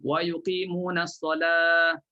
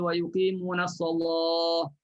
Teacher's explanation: Ada qiraat yang baca dengan nipis huruf lam